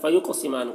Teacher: قوف کو پر پڑھیں گے اور قاف میں قلقلہ کریں گے